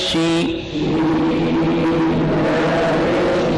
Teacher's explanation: آواز کیوں پھیل رہی ہے؟ تفشی کی وجہ سے. شو شی آواز موٹی اور تیز.